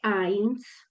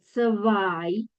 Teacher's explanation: Cuando tengo la E con la I en alemán, lo voy a leer como ai